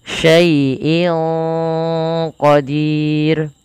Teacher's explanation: Disamarkan suara inn-nya kepada qof. Dan dia qof termasuk salah satu huruf yang dia pangkal lidahnya terangkat, Teman-teman.